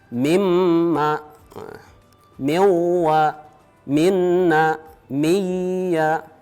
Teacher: Ada 4, yaitu mim, waw, nun, ya. Bunyi nunnya masuk dengan dengung mengikuti bunyi huruf yang ditemui berikutnya. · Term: idgham bi ghunnah